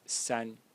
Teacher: 3 in Chinese is pronounced san in the first tone again